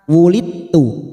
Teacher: Yauma, yauma wulid, ada huruf dal sukun bertemu ta, hati-hati, ini sifat qalqalah dari huruf dal ini hilang, jadi masuk pada huruf ta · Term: idgham mutajanisain